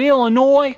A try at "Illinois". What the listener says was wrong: There's no noise in Illinois. That is the proper pronunciation.